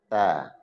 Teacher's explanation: Ta, ujung lidah bertemu gusi atas, ujung gusi atas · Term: huruf ta